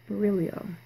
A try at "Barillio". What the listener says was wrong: You were missing out an I that was between the last L and the O.